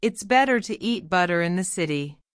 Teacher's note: Say it fast and let those T's melt into D's. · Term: flapping